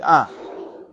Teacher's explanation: It's like an exhalation. And there's no consonant there at all.